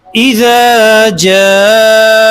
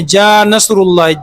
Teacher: جا کے بعد میں آ کی آواز آنا ضروری ہے